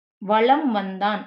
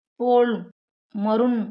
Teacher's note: தனக்குரிய அரை மாத்திரை அளவிலிருந்து குறைந்து கால் மாத்திரை அளவில் ஒலிக்கிறது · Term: குறுக்கம்